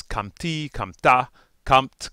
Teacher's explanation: they'll have the short a once you add that consonantal suffix and again it's a consonantal suffix because it begins with a